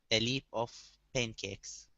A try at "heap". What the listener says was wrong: Instead of a leap, okay, this is a heap. Give me a good H here, a heap of pancakes.